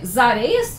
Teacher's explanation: que é né As Areias a gente não pensa nisso mas existe essa junção entre o s e o próximo a da palavra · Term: Elisão